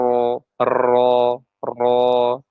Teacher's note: boleh tiga getaran setelah itu hilang ya masuk ke huruf yang berikutnya